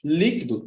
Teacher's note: Líquido, também da mesma forma, não é a última mais forte, não é a penúltima mais forte, e sim a antepenúltima. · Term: proparoxítono